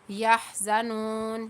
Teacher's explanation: یہاں پر واو مدہ ہو رہی ہے ایک الف کی مقدار کھینچتے ہوئے نون کے اوپر یہاں پر زبر اور آگے وقف آ گیا.